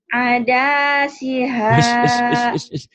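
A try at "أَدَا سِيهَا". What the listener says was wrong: Mana yang panjang enak aja. Ada siha.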